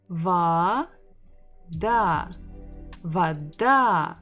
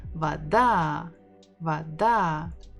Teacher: We stress the final syllable.